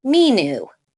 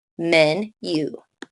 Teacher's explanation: separate it after the N making the U short